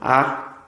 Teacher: é uma vogal aberta Ok e ela está colocada como sendo uma vogal inferior Ela está na parte inferior aqui ou seja para você pronunciar